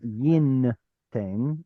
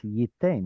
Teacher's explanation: It's not yin ten, it's yiten, where the noon goes, missing.